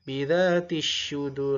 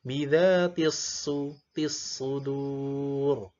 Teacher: Berarti sadanya tebal ya. Bidzatis tissu. Jangan masuk ke sa atau ke sin atau ke shin.